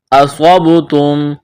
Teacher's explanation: اصابتم، صاد کو موٹا کرنا ہے، با پر قلقلہ کریں گے، میم ساکن کے بعد میم مشدد ہے، میم کا میم میں ادغام کریں گے، غنہ کریں گے